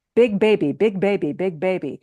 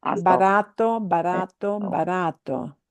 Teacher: In Spanish, you should feel no puff of air.